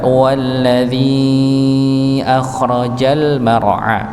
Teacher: Maka dipanjangkan empat empat harakat. Ketika ya sukun bertemu dengan hamzah.